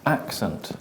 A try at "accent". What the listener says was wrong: You're still saying e, as in Spanish. I want you to say it. Accent. You're saying accent, and I'm saying accent.